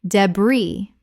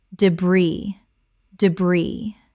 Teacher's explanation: the S is completely silent in both varieties.